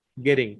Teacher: আমেরিকানরা double টি আসলে অনেক সময় ওরা ড এর মতো উচ্চারণ করে